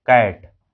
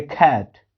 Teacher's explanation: एक ही क को हम क भी बोल रहे हैं और कभी कभी इसे ख भी बोल रहे हैं